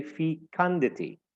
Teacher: the second syllable is the one that is stressed